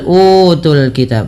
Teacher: Pada lafal utul kitab, panjangkan u 2 harakat karena ia mad badal. Mad badal merupakan mad yang terjadi ketika adanya huruf hamzah bertemu dengan huruf mad.